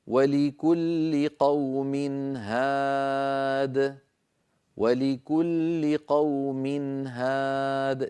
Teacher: لاحظوا بأنني لم أزد في زمن التنوين شيئا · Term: الإظهار